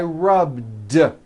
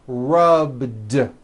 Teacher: All I did was add a voiced D sound at the end. Rubbed. It's not rubbed with an unvoiced T.